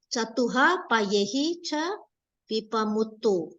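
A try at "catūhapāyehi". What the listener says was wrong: Here, not chatuha. Chatu. Long.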